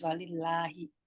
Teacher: Kenapa? Sebelumnya berbaris kasro ya, sebelum lafuz jalalahnya itu lillah itu dibaca tipis.